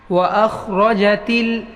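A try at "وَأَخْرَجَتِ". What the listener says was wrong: खा की आवाज़ आए सही से।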